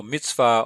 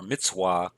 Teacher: some people pronounce that with a V sound some with a W